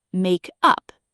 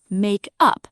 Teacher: Now squeeze it into one word, makeup, and the stress shifts to the first syllable